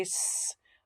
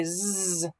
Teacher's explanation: Put your hand in your throat. You can feel your throat vibrating. · you're using your vocal cords this time